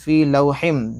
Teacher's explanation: میم ہے، ادغام مال غنہ ہوگا، ناک میں 1 الف کی مقدار آواز لے جا کر پڑھیں گے